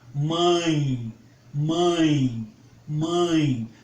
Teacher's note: Vocês vão observar que há uma vibração na narina, justamente porque o som precisa utilizar a fossa nasal para se formalizar, para se concretizar. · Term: ditongos nasais